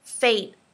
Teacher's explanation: you'll notice I don't really say the T